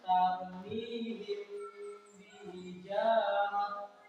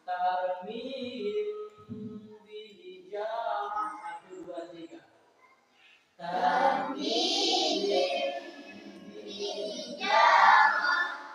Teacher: Jadi hukum bacanya di situ apa? Dengung, menyamarkan bunyi mimati dalam mendengungkan atau memanjangkan dua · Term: ikhfa safawi